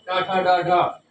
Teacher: टा वर्ग, टा यानी मूर्धा यानी जीवा की नोक तालु के पीछे लगती है जाकर के,